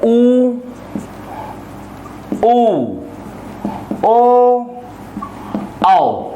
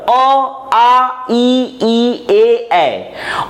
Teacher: ओठ को जब हम गोला करेंगे, ऐसे पूरा गोला के आधार पर जब उसका उच्चारण होगा तो ये कहलाएगा ओठों के गोल आकार के कारण जब स्वरों का उच्चारण होगा तो ये कहलाएगा वृत्तमुखी स्वर। लेकिन ऐसे स्वर जो ओठों के गोलाकार होने के कारण उच्चारित नहीं होते हैं, ये कहलाते हैं अवृत्तमुखी स्वर अ, आ, ई, ए।